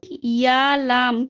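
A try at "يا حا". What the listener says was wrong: ইয়া, তারপর লামটা কোথায় পেলেন? এটা লাম লাগে তো? হ্যাঁ, এটা হচ্ছে হা। জি, এটা ইয়া তারপর হা।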